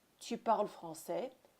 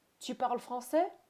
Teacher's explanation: You have a regular sentence in terms of grammar structure, tu parles français, but instead of speaking it as a sentence, tu parles français, we instead use a rising intonation.